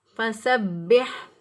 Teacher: با کے اوپر شد ہے، اس لیے اس کو مضبوطی اور قوت سے پڑھیں گے، لیکن اس پر قلقلہ نہیں ہوگا کیونکہ با بھی حروف قلقلہ میں سے ہے۔ · سین کی ادائیگی میں سیٹی جیسی آواز یا چڑیا جیسی آواز آنی چاہیے